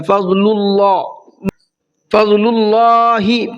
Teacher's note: اللہ کے لام کو منہ بھر کے پڑھنا ہے اس لیے کہ اللہ کے لام سے پہلے پیش ہے، اور جب اللہ کے لام سے پہلے پیش ہوتا ہے تو اللہ کے لام کو منہ بھر کے پڑھتے ہیں۔